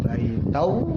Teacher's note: tanwin ketemu wawu, baitau, idgham bi gunnah, baitau wa in, nunnya ada tasydidnya, dibaca gunnah, didengungkan, udara keluar lewat hidung.